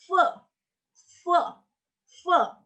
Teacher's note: untuk F itu suara gigi atas dan bibir bawah.